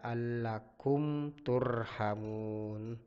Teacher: karena mim sukun bertemu dengan huruf ta cara membacanya dibaca jelas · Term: izhar syafawi